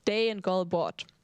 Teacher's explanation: So you have dagen, you have it with G. In some other languages you would pronounce this ga sound, no? But it's in Danish it's very soft.